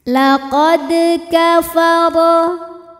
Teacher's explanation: Di sini ada hukum qalqalah sughra karena ada huruf qalqalah yaitu huruf dal yang sukunnya ini asli bawaan dari kalimah laqad dan ada di tengah bacaan kita. Maka cara bacanya adalah dipantulkan dengan pantulan yang kecil.